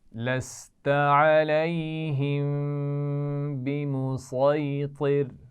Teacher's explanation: علیہم کے میم پر غنہ ہوگا کیونکہ میم ساکن کے بعد با آ رہا ہے · صاد اور طا موٹے پڑے جاتے ہیں